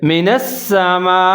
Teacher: آگے بڑی مد ہے، اس کو مد متصل کہتے ہیں، اس کو آپ نے 3 سے 4 سیکنڈ تک لمبا پڑھنا ہے